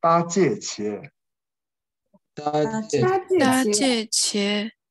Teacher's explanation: 它读八是不送气的，所以我们读接啊